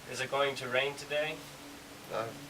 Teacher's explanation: Okay, so it kind of goes down. You have the up and a small down, but not too much.